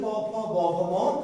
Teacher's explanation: এই যে প ফ ব ভ ম ঠোঁটে স্পর্শ করে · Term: ওষ্ঠ বর্ণ